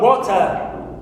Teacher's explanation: In the word water, here, wo is my stressed syllable. It's the first one.